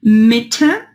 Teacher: É um som que é o intermediário entre um E e um I. Não é tão aberto como o E, mas não aberto como E, nem tão fechado como um I.